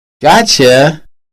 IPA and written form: ˈgɔtʃə (gotcha)